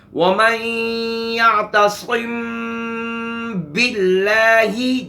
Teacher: ادائیگی دیکھیں میری، وَمَن يَعْتَصِم بِاللَّهِ، جب با کو ادا کریں گے سختی کے ساتھ ادا کریں گے، یہ ہے ادائیگی۔ جب میم ادا کریں نرمی کے ساتھ، باہر والا حصہ ملے گا، جب با ادا کریں گے اندر والا حصہ ملے گا، تری والا حصہ، اور سختی کے ساتھ ملا کر با کو ادا کریں گے۔ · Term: اخفاء شفوی